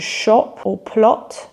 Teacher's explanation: the short o sound and this is also a sound that many non-native speakers find really difficult to pronounce and it's pronounced with rounded lips